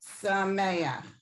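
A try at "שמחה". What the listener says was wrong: Smecha. It's not, if it didn't have the hey at the end, right, then it would be sameach. But since it has the hey, it's smecha.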